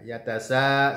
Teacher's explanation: sanya dibaca dengan 4 hingga 5 harokat karena mad wajib muttasil